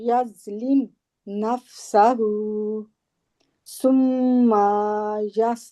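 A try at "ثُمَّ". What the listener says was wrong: तो मीम को लंबा नहीं करना, अलिफ नहीं है इसके आगे, सुम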